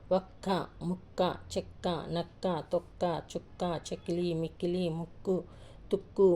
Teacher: ఇవన్నీ కూడా కా ని గట్టిగా చదువుతున్నాం కాబట్టి ఇవన్నీ కూడా ద్విత్వాక్షరాలు అని అంటారు